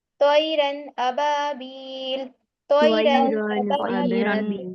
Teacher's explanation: اور بلا غنہ یعنی غنہ نہیں کرنا، ظاہر کر کے جلدی ادا کرنا ہے. غنہ نہیں کرنا ہے اس میں نا.